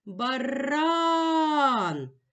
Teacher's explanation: наголос падає на другий склад наголошений склад ран ноголошений голосний а звук Б на письмі позначають